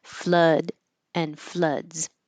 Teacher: a word that has two o's but it sounds like uh like up